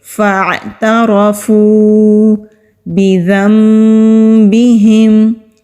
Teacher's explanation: جب ہم ذال کو ادا کرتے ہیں تو زبان کی ٹپ اوپر والے سامنے کے جو دو دانت ہیں وہاں پر نرمی کے ساتھ لگاتے ہیں تو ذال نرمی سے ادا ہوتا ہے